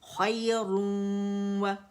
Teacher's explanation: इदगाम नाक़िस बिल गुन्ना, गुन्ना फील हो रहा है